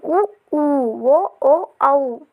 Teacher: మనం పలికేటప్పుడు పెదవులు అనేవి చాలా దగ్గరగా వచ్చేస్తాయి ఉ ఊ ఓ ఓ ఔ పెదవుల సహాయంతో మనం పలుకుతాము నెక్స్ట్ వచ్చేసరికి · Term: ఓస్టియాలు